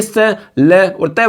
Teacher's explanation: हिंदी में देखिए त वर्ग ल आ जाएगा। इसमें स आ जाएगा। ये दंते से बोले जाते हैं।